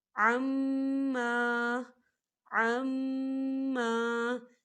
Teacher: میم مشدد ہے تو یہاں غنہ بھی ہوگا، اور ما خالی الف سے پہلے زبر ہے، یہاں پر الف مدہ ہو رہا ہے، تو ہم اسے دو حرکت کی برابر کھینچ کے پڑھیں گے، کیسے؟